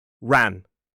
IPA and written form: ræn (ran)